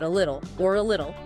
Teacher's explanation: The two T's between the I vowel and the L sound which functions like a vowel here become that flap D. The material highlighted edited it as a particularly challenging example because this flapping happens twice and then it links.